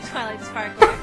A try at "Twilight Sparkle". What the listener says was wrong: It's Sparkle! Sparkle! Sparkle! Not Sparkler!